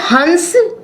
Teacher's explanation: हंस का जब हम उच्चारण करते हैं तो ह के साथ न की ध्वनि आ रही है, जिससे ये स्पष्ट हो रहा है कि जो अंक बिंदु की ध्वनि है वो व्यंजन ध्वनि है।